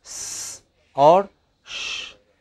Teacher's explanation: vocal chords do not vibrate for either sss or shhh